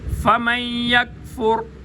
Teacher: کاف باریک ہے تعلق کے سخت حصے سے ادا ہوگا اور یہاں پر قلقلہ نہیں کیا جائے گا. موٹے قاف پہ قلقلہ ہوتا ہے, باریک کاف پہ قلقلہ نہیں ہوتا.